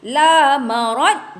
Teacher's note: La marad, jangan qalqalahkan huruf dad.